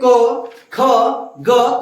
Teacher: जहां से ये आवाज निकल रहा है क ख ग, ये तो कंठ से सीधा निकल रहा है। और जो क ख वाला जो क वर्ग लेन है उसका उच्चारण स्थान कहां है तो कंठ।